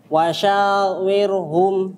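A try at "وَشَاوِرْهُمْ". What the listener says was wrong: wasyawirhum. Ra-nya tipiskan. Wirhum. Tipis gini langsung. Wirhum.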